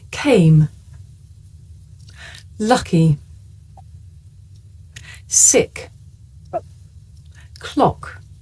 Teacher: this is a voiceless consonant you can hear it at the beginning of the word came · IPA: /k/